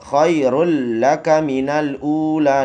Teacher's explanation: Tanwin bertemu dengan huruf lam. Khairul laka minal ula, dileburkan tetapi tidak berdengung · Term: idgham bila khunnah